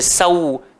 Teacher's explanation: Saufa, ada mat lin dekat situ, so dia kena bunyi lembut je. Sau, kena muncung bibir.